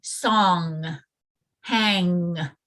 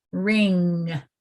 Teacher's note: feel how your tongue rises to kind of block the back of your throat